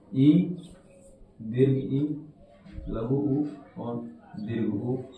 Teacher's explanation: इनका उच्चारण करते समय मुख बंद रहता है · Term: संवृत